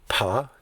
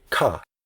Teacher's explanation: when you say paw your lips press together and that doesn't happen when you say ka